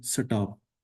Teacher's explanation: So we insert a vowel in order to break two consonant clusters.